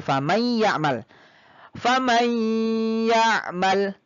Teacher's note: Kenapa dia dikatakan dimasukkan? Karena dari nun ini masuknya ke ya. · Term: idgham bi gunnah